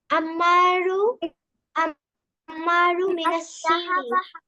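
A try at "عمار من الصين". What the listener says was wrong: আম্মারু এর মধ্যে এক পেশ বলছো, দুই পেশ হবে না কেন? আলিফ লাম নাই তো, দুই পেশ হবে না? আম্মারুন মিনাসসিন।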